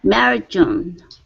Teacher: ending the D, you want to move quickly to the J